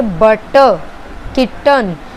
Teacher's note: तो ये हमारा टी साउंड पे जो है ग्लॉटल स्टॉप आ रहा है